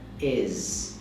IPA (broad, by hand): ɪz